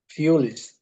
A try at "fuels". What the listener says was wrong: Fuel. Not fool, because I heard you saying fool. This is fool, and this is fuel.